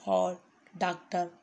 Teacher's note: इसका उच्चारण आ और ओ के बीच की ध्वनि के रूप में होता है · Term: आगत ध्वनि